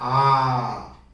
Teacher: आ जो है दीर्घ स्वर भी है और इसको बोलने में मुंह पूरी तरह से खुलता है, आ। विवृत का मतलब ये होता है पूरी तरह से खुलना। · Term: विवृत स्वर